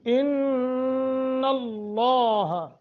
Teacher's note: نون مشدد ہے غنہ کر کے پڑھیں گے